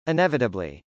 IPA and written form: ˌɪnˈɛvətəbli (inevitably)